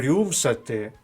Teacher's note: звук рю пом'якшений буква ю означає звук у і м'якість попереднього приголосного